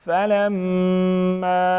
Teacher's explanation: فلما میم مشدد ہیں غنہ کریں گے · الف مدہ ساتھ میں چھوٹا مد 2 سے 3 الف کے برابر کھینچیں گے